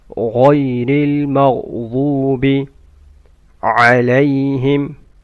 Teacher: غين should be full mouth and ضاد should be full mouth.